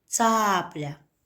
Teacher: ударение падает на первый слог цапля · В слове «цапля» два слога – ца-пля. Позиция звука «ц» в начале, ударение падает на первый слог